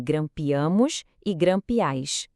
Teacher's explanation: A sílaba forte mudou de lugar, foi para o final. E o i some.